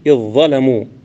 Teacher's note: فالذال من إذ تدغم في الظاء المعجمة بلا خلاف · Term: إدغام